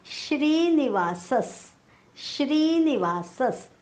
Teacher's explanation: विसर्गाच्या पुढे आलेला आहे स. विसर्गाच्या पुढे जेव्हा स येतो तेव्हा विसर्गाचा उच्चार आपण हलंत स करतो.